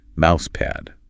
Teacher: Short A in pad and often a stop T at the end.